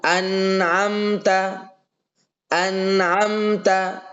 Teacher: satu mimnya dijelaskan berarti tidak disamarkan tidak diidgamkan yang kedua tidak melebihkan gunah nah tidak melebihkan gunah tambahan yang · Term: izhar syafawi